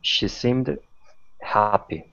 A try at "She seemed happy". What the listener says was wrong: It's not dappy, but happy. Happy. So it's almost like a T now. Almost. It's in between a T and a D.